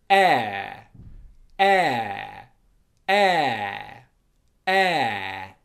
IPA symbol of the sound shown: ə